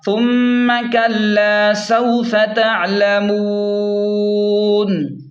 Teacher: وقف کی صورت میں نون کو ساکن کریں گے، نون کو ساکن کریں گے اور مد بھی کریں گے مد عارض کی وجہ سے